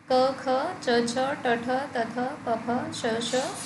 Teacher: हर वर्ग का पहला दूसरा व्यंजन अघोष